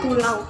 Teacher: mulut dibuka untuk vokal A, mulut lebar kemudian bergerak ke posisi U, mulut membulat. Mulut membulat prosesnya itu tidak bergerak dari posisi rendah untuk A dan ke posisi tinggi dan belakang untuk B.